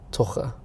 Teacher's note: I'm learning the Porto accent because I live here in the north, and the double R is a ch sound.